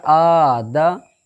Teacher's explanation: آپ دیکھ رہے ہو حمزہ کے اوپر خڑا زبر ہے، تو خڑا زبر ایک الف کے برابر کھینچ رہے ہیں، مطلب کھینچ کر کے پڑھ رہے ہیں